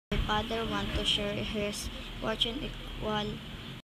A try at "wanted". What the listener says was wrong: The learner omitted the letter "ed" in the word "wanted" and also omitted the letter "ly" in the word "equally."